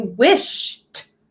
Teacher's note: the e d is going to make the t sound at the end